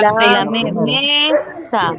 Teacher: esa palabra tiene la mayor fuerza de voz en me